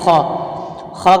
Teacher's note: ख का मखर हलक के ऊपर वाले हिस्से से ख अदा होता है · خا کا مخرج حلق کے اوپر والے حصے سے خا ادا ہوتا ہے